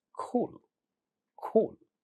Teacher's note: if you had a word like cool, then for some speakers of English, this will get aspirated